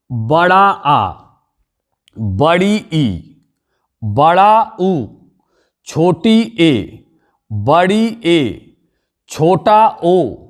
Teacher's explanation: दीर्घ स्वर के उच्चारण में ह्रस्व स्वर की अपेक्षा 2 गुना समय लगता है, इसीलिए ये दीर्घ स्वर कहलाते हैं।